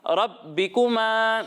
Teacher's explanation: را کو موٹا پڑھنا ہے اور با کو جماؤ کے ساتھ پڑھنا ہے